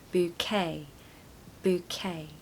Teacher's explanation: So you're going to stress the second syllable, okay?